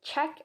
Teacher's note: It is the sound in which there is a constriction between the blade of the tongue and the palato-alveolar region. Palato-alveolar region is the area between the alveolar ridge and the hard palate. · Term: ch sound